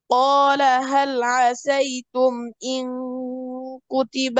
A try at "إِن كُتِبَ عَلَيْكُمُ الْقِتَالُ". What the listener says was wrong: قال هل عسيتم إن كتب যেন আরো সামনে থেকে, অর্থাৎ জিহ্বার গোড়া উপরের শক্ত জায়গা। ইনকু, ইনকু, যেন ইনকু এভাবে মোটা কফের মাখাজ থেকে না চলে আসে। ইনকুতিবা আলাইকুমুল কিতাল। এই কফের নিচে কাসরা থাকার কারণে কফটা একটু লাইট হবে, কিন্তু কাফের মতো একদম না করাটাই ভালো।